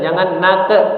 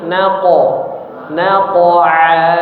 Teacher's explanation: huruf qof jangan berubah menjadi e